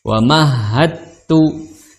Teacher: dal dengan ta itu makhrajnya sama. Sama-sama di ujung lidah bertemu dengan pangkal gigi seri atas. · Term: satu makhraj